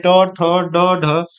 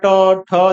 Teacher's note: मुर्धा यानी जो जीभ के ऊपर वाले भाग से होता है